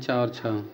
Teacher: तालू से बोले जाते हैं चा और छ